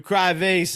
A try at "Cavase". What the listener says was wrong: I think it's Cavase, not Cry Vase. I think it's Cavase. There's no R there.